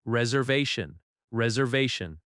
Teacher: The stress falls on the third syllable.